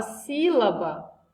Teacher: Na palavra sílaba, a mais forte é o si. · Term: sílaba tônica